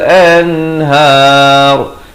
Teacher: nun mati yang ada tanda mati asli bertemu ha, jangan panjang, terus bunyi an, masuk har. Dan kalau waqaf, ra ni jadi tebal. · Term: izhar mutlak